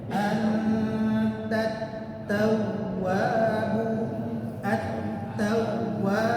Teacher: di huruf waw yang bertasydid di tengah kalimat itu ada penekanan.